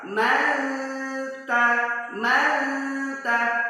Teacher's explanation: ketika kita mengucapkan Man lidah kita langsung ke bentuk huruf ta